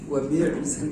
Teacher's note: hamzah jangan sampai terasa ain